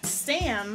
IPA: sæm